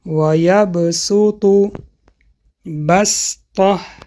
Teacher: به این سبب اگر حرف سین در بالای حرف صاد باشد، بجای حرف صاد سین میخونیم